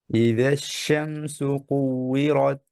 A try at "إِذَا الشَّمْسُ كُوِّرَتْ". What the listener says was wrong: আর একটু শিনটাকে প্রেসার দিয়ে ধরবেন যেন তাফাসসির শিন মতো আদায় হয় হ্যাঁ যেমন ইদাশ ইদাশ শামসু শিনে কি আছে তাফাসসি তাফাসসি শিন শিনকে তাফাসসি করে পড়েন জি